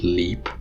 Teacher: non-velarized la, for example, in the beginning of a syllable, like the word leap, in which the la is not velarized, in that case, that's called a clear L.